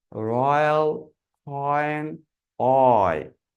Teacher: আপনার খেয়াল করেন এখানে একটা পার্পল অ্যারো চিহ্ন দেখতে পাচ্ছি, যে অ্যারো চিহ্নটা একদম ই এর দিকে চলে যাচ্ছে। সো রয়্যাল, অ থেকে শুরু হয়ে ই এর দিকে আমাদের টানটা মুভ করছে।